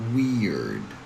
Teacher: Then because we have an R sound, there's a little transition from E to R. So we add a little schwa sound, a very relaxed uh sound to go from E to R. So it becomes we and then we add a little soft D sound to finish the word.